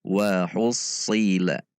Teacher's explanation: Tidak membulatkan bibir sama dengan titik sin namun menegangkan pangkal lidah. Itu huruf sod.